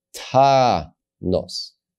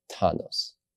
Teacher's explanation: And for this reason, we read this as ta-nos. We accentuate the first syllable because that's where the accent is. And we read this as a kamatz chatuf because it's closed and it's not accented, ta-nos.